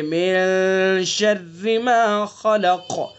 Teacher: इख्फा करेंगे एक अलिफ के बराबर नाक में आवाज़ ले जा करके, यानी खैशूम से नाक की नरम हड्डी से अदा करेंगे।